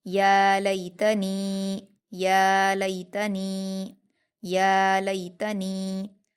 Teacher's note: लाम पर या लीन है, इसको हम नरम आवाज़ के साथ जल्दी पढ़ेंगे। ता पर हरकतें जल्दी पढ़ेंगे। · ता पर हरकतें जल्दी पढ़ेंगे। और नून पर या मद्दा है, इसको हम 2 हरकत खींच कर पढ़ेंगे।